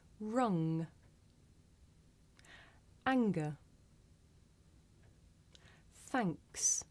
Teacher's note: Now we make this sound towards the back of the mouth. And if you do this sound correctly, you can feel a vibration in your nose.